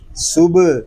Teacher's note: با ساکن ہے، اس میں کلکلہ خوب ظاہر کریں گے، اس کو صبح نہیں پڑھیں گے۔